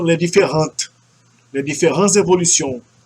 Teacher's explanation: Daí o S é pronunciado porque ele se liga ao E de evolution.